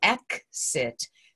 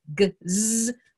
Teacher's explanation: the accented short vowel comes prior to the X, so it's an unvoiced k, s